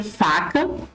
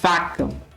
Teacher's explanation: são letras lábio dentais só que o f de faca surda e o v de vaca sonora